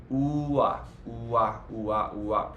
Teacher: it's a ooh combined with the next vowel